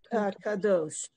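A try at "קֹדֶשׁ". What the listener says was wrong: Look at the vowel. The dot on the top is o.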